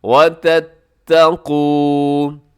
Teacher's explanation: تَتَّقُوا میں قاف موٹا ہے اور باقی اس کے اندر جو حرف ہیں وہ باریک ہے